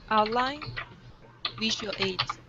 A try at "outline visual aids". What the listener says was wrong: nice really good pronunciation